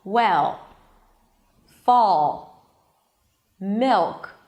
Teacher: It's not really an L. It's this weird vague sound that colors the vowel right before the L. The dark L appears after vowels or before consonants also in the middle of the word, but usually at the end of words.